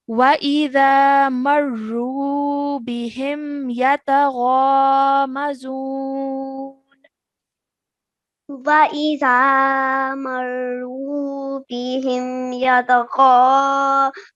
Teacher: This fatha turns into a sukoon, like you've just told me before as well. This vaw mad needs to be spent a timing of 2 seconds, 4 seconds, or 6 seconds as we end the verse.